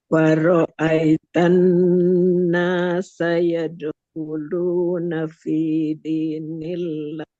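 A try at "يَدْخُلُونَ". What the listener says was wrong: Tinggal khnya ee kasih suara ngorok sedikit aja. Jangan yadulu yadulu nanti seperti h.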